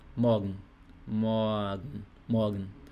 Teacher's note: Não é um A também tão aberto, não é morgen. É um leve A.